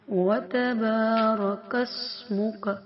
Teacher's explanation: کس سین ہے تو سیٹی کی آواز، منہ کا کس منہ کا بھی نہیں پڑھیں گے۔